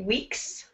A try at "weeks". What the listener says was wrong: Weeks. Give me the S sound at the end.